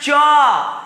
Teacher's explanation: जीभ तालु में सट रहा है, एक प्रकार की ध्वनि, एक प्रकार की कंपन हो रही है, उस कंपन का नाम है च।